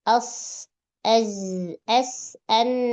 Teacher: Ujung lidah yang lancip aja tanpa disertai bagian punggungnya. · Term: ujung lidah lancip